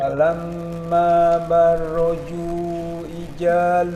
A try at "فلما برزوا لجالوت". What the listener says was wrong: masih belum itu huruf ja barazu zu ya